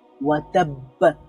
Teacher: এখানে ওয়া তাব্ব এর মধ্যে তাসদিদ ছিল, এই জন্য সেখানে আরো শক্তিশালী কলকলা হবে